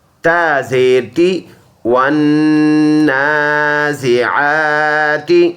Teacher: ون زا زیر زی سیٹی والا حرف، والنازی عین کھڑی زبر آ، ایک کلی کی مقدار اس کو لمبا ادا کریں گے